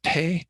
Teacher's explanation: you would feel the air coming out with that h sound right after the p